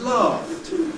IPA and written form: lɑːft (laughed)